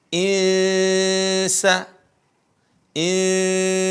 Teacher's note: n-nya itu samar-samar kenapa bertemu dengan huruf Sin yang merupakan huruf ikhfa